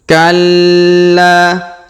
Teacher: masuk ke dalam kubur kemudian kita lanjut ayat ketiga Kalla perhatikan huruf la ditahan dan ditekan kemudian kita panjangkan dua harakat ya karena terdapat Alif di depannya Kalla Safa huruf sa diayun sekali karena terdapat wau sukun saufa